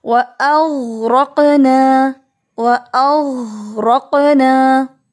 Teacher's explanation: پڑھا وَأَغْرَقْنَا، اس کو انڈرلائن کریں، غین کو ہلا کے نہیں پڑھنا. قاف جو ہے وہاں پہ قلقلہ ہو رہا ہے لیکن غین پر نہیں